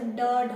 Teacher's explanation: ऐसे जीभ थोड़ा लुढ़क जाती है नीचे, ऐसे ड ढ बोलते हैं ना, जब ड बोलेंगे तो जीभ थोड़ा लुढ़कती है बोलते टाइम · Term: उत्क्षिप्त या द्विगुण व्यंजन